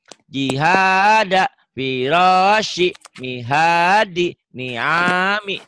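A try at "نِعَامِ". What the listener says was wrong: Tapi jangan panjang ujungnya ya.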